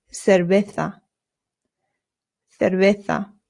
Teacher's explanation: Not cera. Your lips just touch very lightly when you make the V sound. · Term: very light B sound